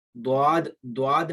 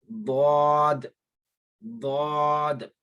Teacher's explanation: زبان کا یہ والا جو کارنر ہے، یہ جو سامنے والا کنارہ ہے، جو نوک ہے زبان کی، اس کو سامنے والے دانتوں سے ٹچ نہیں کرنا، صرف آپ نے زبان کا بغلی کنارہ حافہ لسان کو داڑوں سے ٹچ کرتے ہوئے اس کی ادائیگی کرنی ہے۔ · یہ دعاد نہیں ہوتا، یہ بالکل ایک ہی آواز میں ادا ہوگا